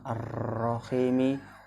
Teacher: Idgham Syamsiah karena ada lam ta'rif diikuti huruf ro cara membacanya huruf lam dimasukkan ke huruf ro